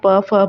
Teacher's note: प वर्ग का उच्चारण स्थल जो होता है वो आपका ओष्ठ होता है